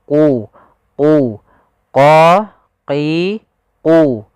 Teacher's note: Huruf qaf pangkal lidah kita harus kita angkat sehingga dia makhraj daripada huruf qaf itu pangkal lidah dengan langit-langit atas, maka dia menempel.